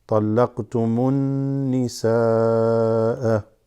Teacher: alif lam drops, goes straight to the noon, which is with gunna. So this is going to go straight from the meme to the noon without saying L sound to it.